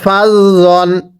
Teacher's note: জটা নরম করে এটাকে ফাজ জান পড়লে পড়া শুদ্ধ হবে না